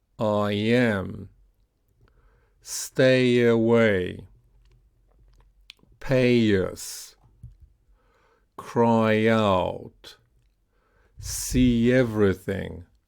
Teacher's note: So that's with the Y offglide like E, I or A. Those uh words that end in in these vowels will link with the E offglide.